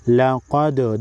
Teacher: لقد دال ساکن کو ہلا کر پڑھیں گے۔ لقی قافیہ زیر قی کو بھی ایک الف کے مقدار کھینچ کر پڑھیں گے۔